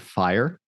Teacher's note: you can hear yourself going from an ah to an E to an uh sound and then there's an R coloring there's an r in the end there uh and it's fascinating